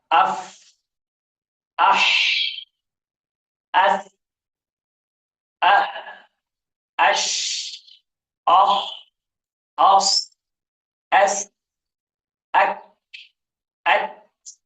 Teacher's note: ان سب میں آپ کی ہوا سانس جو ہے وہ جاری رہ رہی ہے · ووکل کارڈز اوتار صوت بالکل کھلے رہ جاتے ہیں، حرکت نہیں کرتے، ہوا کی مقدار زیادہ خارج ہوتی ہے، جس کی وجہ سے ان کی آواز میں پستی آ جاتی ہے، کمی آ جاتی ہے آواز میں، جس کے بنا پر ان کو حروف ہمس کہا جاتا ہے۔